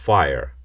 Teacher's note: এই এফ হচ্ছে মূলত দন্তষ্ঠ ধ্বনি, যাকে আমরা বলি লেবিওডেন্টাল। আপনি উপরের ঠোঁটকে টেনে ধরে রেখে এটিকে উচ্চারণ করতে পারবেন ফায়ার।